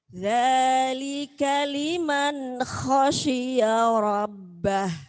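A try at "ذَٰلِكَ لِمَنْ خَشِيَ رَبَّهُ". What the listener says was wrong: Nggih, bagus.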